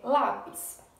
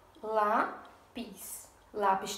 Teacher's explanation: a penúltima sílaba é a sílaba forte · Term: paroxítona